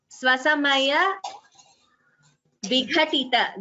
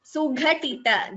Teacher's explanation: Svasamaya Vighatita, Gha is Mahaprana. Sughatita, Gha is again Mahaprana.